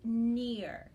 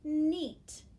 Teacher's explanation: i very clearly hear an e sound i'm not hearing the ear so i would say e i would use my vowel team